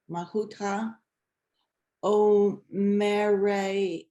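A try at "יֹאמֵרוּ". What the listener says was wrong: Don't forget the first letter. It's an actual letter. Yomeru.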